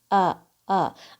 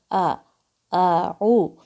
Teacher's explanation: آپ کی آواز صرف منہ سے نہیں آ رہی ہے، حلق کے سب سے نیچے سے یہ آواز آ رہی ہے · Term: حمزہ کی آواز